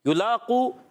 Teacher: युलाक़ू यहाँ पर पेश है, हरकत है, हरकत को नहीं खींचेंगे, और लाम पर खड़ा ज़बर एक अलिफ खींचेंगे